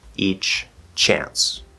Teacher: you have to say both CHs